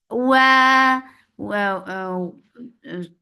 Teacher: the makhraj of waw is circling your lips, make it 2 counts long